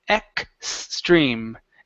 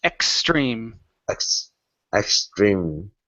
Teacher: when we pronounce the X, it's a KS sound